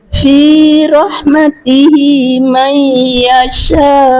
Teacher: kalau di akhir kita berhenti dia menjadi mad arid sukun boleh sampai enam harakat. Ini boleh panjang sekali.